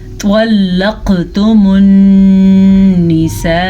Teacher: وَإِذَا طَلَّقْتُمُ النِّسَاءَ، پھر سے طوا کو پر پڑھیں، قاف پہ قلقلہ کریں اور نون کے اوپر غنہ کریں کیونکہ نون پہ شد ہے